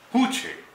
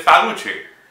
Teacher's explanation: Along that path, there are communities which pronounce, even today, they pronounce sa as ha